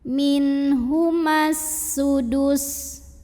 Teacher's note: Alif lamnya namanya alif lam syamsiyah. Karena alif lam bertemu huruf syamsiyah yaitu sin, maka alif lam tidak dibaca.